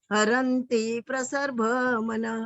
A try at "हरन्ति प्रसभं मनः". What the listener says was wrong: प्रसर नहीं, हरन्ति प्रसभं मनः।